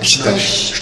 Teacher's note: Pues aquí a lingua vai no padal. Ao medio, a metade da lingua ten que bater contra a metade do padal suavemente e deixar pasar o ar por aí